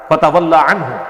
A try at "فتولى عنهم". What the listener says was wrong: فتولى عنهم فتولى عنهم لام کھڑی زبر ہے بیٹے اس کو کھینچ کر پڑھو